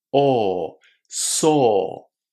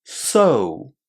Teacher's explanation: So in saw our lips make just one vowel sound, a long o. So in so we're making a vowel sound that's two sounds together o and u.